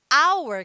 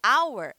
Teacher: exemplo de baixo é alway hour que significa hora em inglês o h é mudo ele não tem som então o som que eu pronuncio na palavra Hauer é um